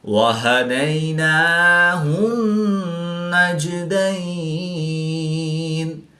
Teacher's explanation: یا ساکن سے پہلے دال پر زبر تو یا لین اس کو لمبا نہیں کریں گے۔